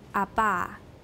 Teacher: start from a fully voiced plosive say abba making sure that the voicing continues throughout the closure now say this sequence slowly making the closure last as as